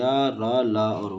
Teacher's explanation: रा को लुंठित और ला को पार्श्विक कहा जाता है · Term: अंतस्थ व्यंजन